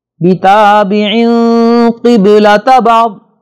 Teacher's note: نون تنوین کے بعد قاف آ رہا ہے لہذا یہاں پہ غنہ ہوگا جسے اخفا والا غنہ کہتے ہیں. قبلۃ با پر جزم اور سکون ہے لہذا اس پر ہلکا سا جھٹکا ہوگا.